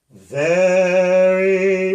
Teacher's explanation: so if i say very my tongue curls which relaxes the r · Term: flipped r